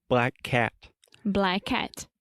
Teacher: When we say the word black or blackout, the a sound is very open and to the front.